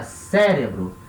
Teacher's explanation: em português a sílaba tônica é a primeira